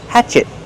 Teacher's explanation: Use a stop T. Stop the air.